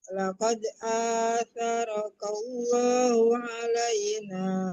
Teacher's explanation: Laqarallahnya panjang. A-nya dipanjangkan.